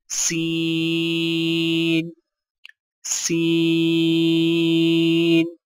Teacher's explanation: زبان کی نوک کو سامنے والے نیچے کے 2 دانتوں کے کناروں سے مضبوطی سے لگا کر باریک اور سیٹی جیسی آواز میں پڑھیں